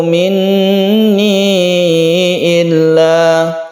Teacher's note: Maka ini hukumnya yaitu mad jaiz munfasil, bisa satu bisa dua alif. Jaiz artinya boleh, munfasil artinya terpisah antara mad tabi'i dan hamzahnya, ini terpisah lain kata.